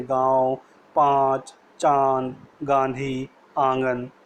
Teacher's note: नाक की सहायता से बोले जाने के कारण इन्हें अनुनासिक कहा जाता है